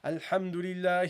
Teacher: you make the last letter non vowel the noon you don't read the fata on the noon